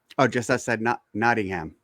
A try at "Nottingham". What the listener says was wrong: Just about. Yeah. Don't pronounce the H. Don't pronounce the H. Nottingham. Or you say Nottingham.